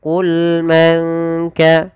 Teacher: Baik, pada lafal bacaan qul man kana, pada lafal lam qul, sempurnakan pada lafal lam yaitu sifat bainiyahnya, yaitu di antara tidak terlalu mengalirkan suaranya dan tidak terlalu menahan. · Kemudian pada lafal nun mati bertemu kaf, di sini samarkan suara nunnya kepada huruf kaf karena di sini ada bacaan ikhfa hakiki, yaitu cara membacanya adalah menyamarkan suara nunnya kepada huruf kaf, maka langsung kepada makhraj daripada huruf kaf dan ditahan 2 harakat.